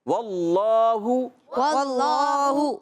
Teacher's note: پیش کو کھینچنا نہیں ہے کیونکہ صرف پیش ہے، اگر الٹا پیش ہوتا تو ہم کھینچتے ہیں، اب صرف ہم واللہ، واللہ۔